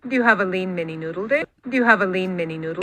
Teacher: This is one of those weird ones, though, where it's this H plus downstep high star. So the speaker is starting from the high end of her range.